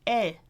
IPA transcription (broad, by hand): eɪ